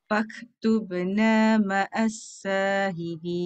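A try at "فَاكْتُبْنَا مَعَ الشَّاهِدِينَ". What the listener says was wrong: Satu dekat kaf, satu dekat ain. Masih ada bunyi fak. Angin saja.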